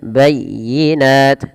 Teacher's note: tekan ya karena itu adalah ya tasdid